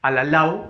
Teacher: Alalao, fuerza de voz en la última sílaba.